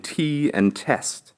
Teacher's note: the letter T is pronounced as in English although your tongue has to touch the back of your teeth